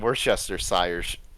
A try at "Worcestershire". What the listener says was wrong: Wester. It's pronounced Wester. It's literally pronounced Wester. No, it's pronounced Wester. It's either Wester or it's Worcester. You don't pronounce all that stuff. This is one of those.